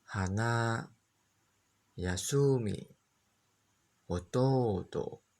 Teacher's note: merendah pada mora yang terakhir.